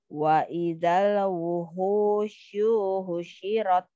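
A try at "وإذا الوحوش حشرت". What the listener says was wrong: lagi ya di sini pendekin lagi wuhushu hushirat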